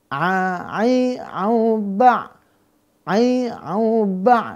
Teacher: ya maka tidak terangkat kita Cek a ba a ba ya ainnya enggak terangkat pangkalnya dia datar maka dia istifal